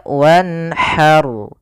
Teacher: Dari makhrajnya untuk ha kecil dari tengah tenggorokan kita.